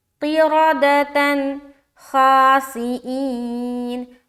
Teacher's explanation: تو یہاں پر ہم اظہار کریں گے، نون کی آواز کو ظاہر کریں گے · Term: اظہار کا قاعدہ